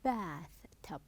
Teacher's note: you will stress the first part and unstress the second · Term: stressing